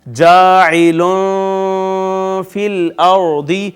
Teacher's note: یہاں نون تنوین کے بعد حرف اظہار نہیں ہے، لہٰذا یہاں پہ اخفا کریں گے ، حروف اخفا میں سے ہے فا، جاعل فی الارض، را